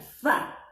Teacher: Tha yang mana digigit ujung lidahnya.